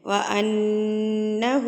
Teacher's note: الٹا پیش ہے تو الٹا پیش کو آپ ایک حرکت کے برابر لمبا کر کے پڑھیں گے